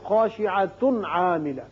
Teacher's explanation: یعنی تنوین کے بعد عین ہے اظہار کر کے